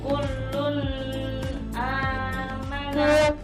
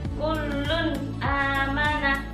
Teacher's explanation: Cara membacanya adalah nun mati atau tanwin dibaca jelas dan pendek tanpa disertai dengung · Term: idhar